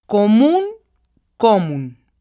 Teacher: Vemos que común tiene la sílaba tónica en la última sílaba, por lo tanto es una palabra aguda. Y como termina en N, cumple con la regla de las agudas.